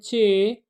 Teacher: جی، چے، آپ دیکھیں چے، آپ خود پریکٹس کریں، چے، تو چے میں آپ کے تالو کے ساتھ ٹچ ہو رہی ہے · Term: تالوئی آوازیں